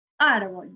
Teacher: La sílaba tónica es ar